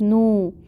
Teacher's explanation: واو مد ہو رہی ہے اور آگے وقف آ رہا ہے، تو اب ہم اس کو 6 کاؤنٹ تک کھینچیں گے اور یہ نون کو ساکن کریں گے کیونکہ آگے اب ہم نے وقف کرنا ہے۔